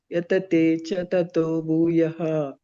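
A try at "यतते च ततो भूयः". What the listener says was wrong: ಇಲ್ಲಿ ಯತತೆ ಚತತೋ ಅನ್ಬೇಡಿ, ಯತತೆ ಚ ತಥೋ ಭೂಯಃ. ಚ ಅಂದ್ರೆ ಪದ, ಅದನ್ನ ನೀವು ಚತತೋ ಅಂತ ಹೇಳಿದ್ರೆ ಮತ್ತೆ ಅದು ಬೈರ ಆಗುತ್ತೆ.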